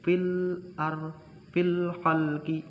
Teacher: Ini adalah alif lam qamariyah. Kenapa? Karena alif lamnya dibaca jelas.